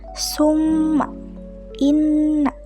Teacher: nun dan mim yang bertasydid dikenal dengan istilah gunah musyadadah di mana guna artinya sengau ataupun dengung